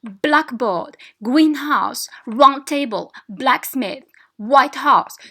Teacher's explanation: The stress takes place on the adjective.